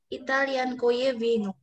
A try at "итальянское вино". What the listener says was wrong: Italian koye, ada S-nya. Ya, Italian koye vino.